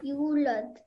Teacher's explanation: this is a wow madda, so you have to stretch the sound of you out for 2 seconds, okay?